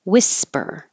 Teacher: forget about that H at the beginning